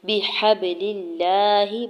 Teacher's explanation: بِحَبْلِ اللَّهِ، با کے زیر کو جلدی سے ادا کرنا ہے۔ ہا کے زبر کو با ساکن کے ساتھ ملاتے ہوئے کلکلا کریں گے۔ لام کے زیر کو لام جلالہ کے ساتھ ملاتے ہوئے لام جلالہ کو باریک پڑھیں گے اور اوپر کھڑی زبر دو حرکت کھینچ کے ادا کریں گے۔